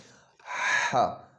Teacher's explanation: جیسے تھوڑی سی سیٹی کی آواز آئے، جیسے ہم سانس لیتے ہیں، یہ سانس لینے والی جگہ جو ہے نا یہ اس کا مخرج ہے، اور اس کو ہاں ادا کریں گے۔ · ہا جو حلق سے ادا ہوتا ہے، درمیانی حلق سے۔ حلق کی 3 قسمیں ہوتی ہیں، تو ایک حلق کا جہاں ہمارا یہ زبان کی جڑ شروع ہوتی ہے، جہاں ہمارا اوپر چھوٹا سا کوا جو ہے نا لٹکا ہوتا ہے، تو یہ درمیانہ حلق ہے، اور یہاں سے آواز کو رگڑ کر ہا کو ادا کرتے ہیں۔